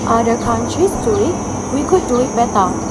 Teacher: the original accent influenced by South African English stresses all content words especially beta which is delivered more forcefully.